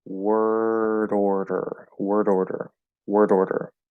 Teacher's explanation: It sounds a little more solid because remember, we can't actually freely tap it here. But you can sort of hear the D punctuating the R sounds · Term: flapping D